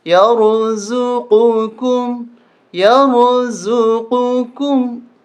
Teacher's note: یہ قاف موٹا، اس کو موٹا کر کے پڑھیں گے، اور یہ کاف ہے اس کو باریک پڑھیں گے